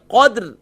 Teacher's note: یہاں بھی وہی مسٹیک جو ہم اکثر کرتے ہیں، لیلۃ القدر، قدر نہیں ہے، قدر. قدر یعنی دال بھی ساکن ہوگا اور را بھی ساکن ہوگی